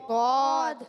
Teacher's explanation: اور ضاد بھی پر حروف میں سے ہے، حرف مستعلیہ میں سے ہے اور حرف مطبقہ میں سے بھی ہے. اور جب ضاد کو ادا کرتے ہیں زبان کا بغلی کنارہ اوپر کی داڑوں کی جڑوں سے جب لگاتے ہیں تو ادا ہوتا ہے ضاد